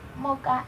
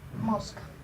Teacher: la articulación debilitada del fonema S en posición implosiva.